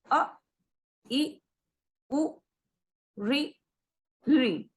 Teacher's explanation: हम देख रहे हैं कि इनके उच्चारण में बहुत कम समय लग रहा है, अर्थात एक मात्रा का समय लग रहा है, इसलिए इन्हें ह्रस्व स्वर कहते हैं।